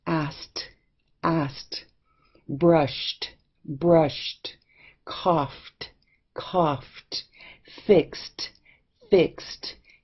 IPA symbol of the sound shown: t